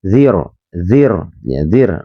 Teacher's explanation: nyerok tipis zir karena sebelumnya ada huruf yang berharokat kasroh